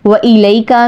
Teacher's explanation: وَإِلَيْكَ میں آپ نے واؤ کے لیے ہونٹ گول کرنے ہیں اور کھینچنا نہیں ہے. حرف لین کو بغیر کھینچے نرمی سے ادا کرتے ہیں.